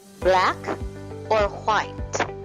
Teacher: you have the rising intonation followed by the falling intonation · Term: mixed intonation